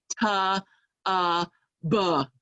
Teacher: That at the end of T is a schwa. We need to clip it, get it out of there.